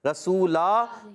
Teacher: رسولن 2 زبر کی تنوین ہے، مگر وقف کرتے ہیں تو رسولا ہو جائے گی. وقف کرنے میں رسولا، وقف بالابدال مع الالف ہو جائے گا.